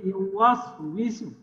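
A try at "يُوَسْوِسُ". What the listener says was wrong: না বিসু না, ওয়াস উইসু। তাহলে ওয়াস উইসু, ওয়াস উইসু।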